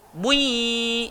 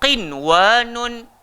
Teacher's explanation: nun mati bertemu ya, nun mati bertemu waw dalam satu kalimah, dan dia tak jadilah idgham. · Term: Izhar mutlaq